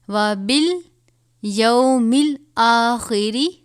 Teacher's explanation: خوا کو پر پڑھا جاتا ہے